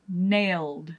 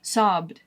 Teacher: You're going to end with that D sound because those are voiced consonants.